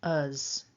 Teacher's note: we've got the schwa and a voiced z sound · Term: weak form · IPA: /ə/